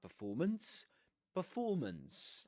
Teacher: with a schwa at the beginning. Performance with that long o in the middle. Performance and ending with a schwa